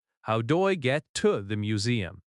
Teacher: The word to reduces to tuh.